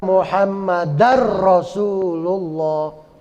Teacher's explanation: bunyi nun mati atau tanwin masuk ke huruf berikutnya · idghamnya idgam bila gunah tidak berdengung wa Ashadu anna muhammadar rasulullah ya langsung muhammadar kayak tasdid muhammadar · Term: idgham bila ghunah